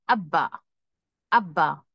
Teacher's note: एक तो तशदीद है इसलिए शिद्दत बहुत ज्यादा हम उस पर जोर दे रहे हैं